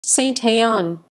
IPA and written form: sɛ̃t‿ɑ̃ (Saint-Haon)